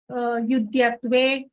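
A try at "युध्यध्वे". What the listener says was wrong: So same problem. Your Alpaprana of and Mahaprana, there is a bit of confusion. Yudhya, Yudhya.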